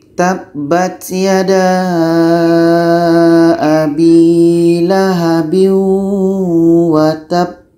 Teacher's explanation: Di sini menjadi ba mati, sifatnya adalah qalqalah, ada pantulan.